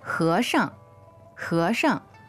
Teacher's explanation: this 轻声 sounds a little bit like fourth tone